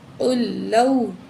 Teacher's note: قل لو، تو یہاں قاف کے اوپر جو ہے پیش ہے، یہ ساکن لام نہیں پڑھنی، قاف کو اگلی لام سے ملائیں گے